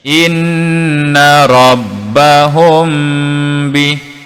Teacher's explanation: mim bertanda sakinah, selepasnya adalah huruf ba, kita baca dengan 2 harakat.